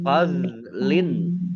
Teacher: ya, dok sukun ini bukan kol-kolah, jangan dipantulkan